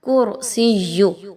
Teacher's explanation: را پر جزم کا نشان ہے اور کاف پر پیش آ گئی ہے، تو آپ نے اس را کو پر پڑھنا ہے، باریک نہیں پڑھنا